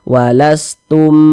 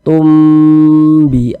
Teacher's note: huruf ba nih Nah maka hukumnya adalah Ikhfa Syafawi Nah maka kita dengungkan tumnya kita tahan kita panjangkan saja Nak wastum Tum kita panjangkan kita dengungkan tumbi a a dibaca